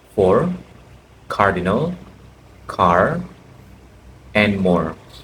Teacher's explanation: Rhotic R refers to the pronunciation of the r sound in all positions of a word. In American English, rhotic R is usually used after a vowel sound.